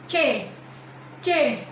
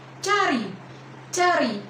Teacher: Baris pertama kolom palatal ada palatal plosif, yaitu saat lidah menyentuh bagian langit-langit keras dan ada letupan.